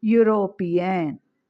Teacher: Even the word starts with e, we are not pronouncing e, we are pronouncing u